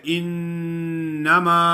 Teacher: انما نون مشدد ہے، غنہ ادا کرنا ہے، اور میم الف ما ہے، انما۔